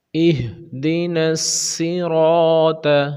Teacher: صاد بھی موٹا ہے، را بھی موٹا ہے، طا بھی موٹا ہے، تینوں حروف کے اوپر گرین کلر ہے.